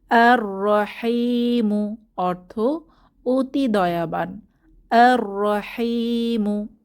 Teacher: এটা হচ্ছে হুরুফে শামসি তাই আমরা লামের উচ্চারণ করবো না